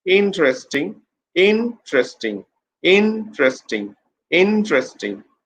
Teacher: Put pressure on the first syllable.